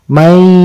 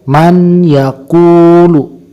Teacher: harus memakai gunnah. Ukuran panjangnya yaitu 2 harokat. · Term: idgham ma'al gunnah